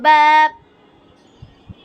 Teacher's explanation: বা 2 ঠোঁটের ভিজা অংশে বাপ, মিম 2 ঠোঁটের শুকনা অংশে মিম, ওয়াও বা মিম।